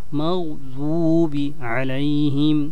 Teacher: জিহ্বার গোড়ার কিনারা উপরের মাড়ির সাথে লাগিয়ে, উপরের দাঁতের মাড়ির সাথে লাগিয়ে তেলাওয়াত হবে